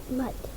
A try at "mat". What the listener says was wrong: Now careful, what's your vowel sound? So say mat. Mat.